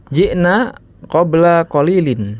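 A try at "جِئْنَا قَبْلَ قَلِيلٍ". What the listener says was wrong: Ji'nanya pendek ya. Ji'na qabla qalilin.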